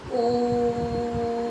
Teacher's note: यहां आपने ओ को बहुत खींचा काफी लंबे समय तक खींचा